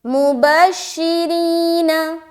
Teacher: अब यहाँ पर या मद्दा का तो कायदा हो रहा है, साथ ही साथ आपने ये भी देखना है कि इस रा के नीचे क्या है, जेर है। तो या मद्दा में जब हम एक अलिफ खींचेंगे तो इस रा को हम बारीक रखते हुए खींचेंगे